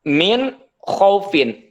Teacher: sekalipun memang nunnya dibaca jelas tapi tidak boleh menggunakan dengung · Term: izhar